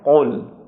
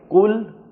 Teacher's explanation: قل کے اندر بھی یہی دو نقطے والا قاف ہے، اس کو بھی آپ نے تالو پر زبان کی جڑ لگا کر موٹا کر کے ادا کرنا ہے، قل۔ اگر باریک پڑھیں گے کل تو یہ دوسرا کاف ہو جائے گا، اور یہ غلط ہو جائے گا۔